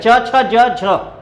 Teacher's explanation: ठीक है, ये चारों व्यंजन क्या हैं, आपको पता है अच्छी तरह से कि च वर्ग में ये स्पर्श व्यंजन है, लेकिन इनके उच्चारण में भी हल्का सा संघर्ष होता है। तो स्पर्श है और थोड़ा सा संघर्ष यहां भी है, घर्षण हल्का सा होता है, इसीलिए इन्हें स्पर्श संघर्षी व्यंजन कहते हैं